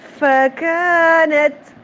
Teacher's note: آپ فا ادا کریں آپ کا ساتھ میں سانس باہر کی طرف نکل رہا ہو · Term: ہمس